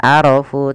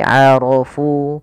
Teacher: Ro-nya tebal bukan arafu tapi arafu karena dia ro berharokat fathah maka dia tebal. Fu ada bacaan mad tabi'i maka dia wajib dipanjangkan dua harokat.